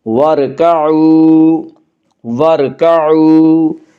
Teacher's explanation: وَارْكَعُوا، وا مدہ وہ واو جو ساکن ہے اس سے پہلے پیش ہو، وا مدہ کو ایک الف کے برابر کھینچ کر پڑھیں گے۔